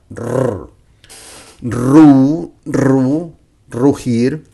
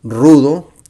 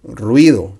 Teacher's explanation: remember, the beginning of the word R sounds strong as a rolling tongue R